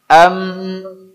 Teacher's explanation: tempat keluarnya pada alkhaisyum yaitu rongga hidung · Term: ghunnah